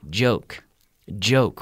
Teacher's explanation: with a J which is almost like a CH and you activate the vocal cord